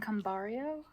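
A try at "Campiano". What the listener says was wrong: There's no R in it. It's exactly as it's spelled. It's cum and piano. It's cum piano.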